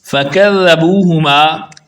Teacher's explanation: ذال کو بھی اسی جگہ سے ادا کرتے ہیں جہاں سے سا کو ادا کرتے ہیں